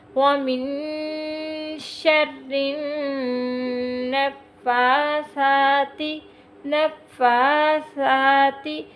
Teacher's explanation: اس کو ہم سا سیٹی سے نہیں پڑھیں گے، نرمی سے پڑھیں گے